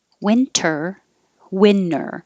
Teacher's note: if you say winter without the t yes it will sound like winner